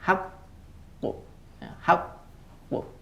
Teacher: Pantulannya di belakangan ditekan dulu baru memantul. Hati-hati bukan suara tambahan. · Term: Qalqalah kubro